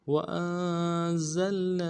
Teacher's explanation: وظللنا عليكم الغمام وأنزلنا واو کو نون سے ادا کرنا ہے حمزہ کو نون ساکن کے ساتھ ملانا نون ساکن میں غنہ کریں گے